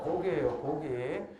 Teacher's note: 뒤에 있는 기억은 유성음 기억이 돼요. · 써보면 얘 무성음이고 얘 유성음이고 얘 무성음이고 얘 유성음이죠. 유성음과 유성음 사이에 있는 무성음은 유성음으로 바뀌어요.